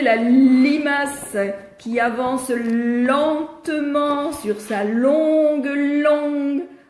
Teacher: quand je fais ma langue, elle est en haut, derrière les dents, sur les raies palatines. La pointe de la langue est en haut.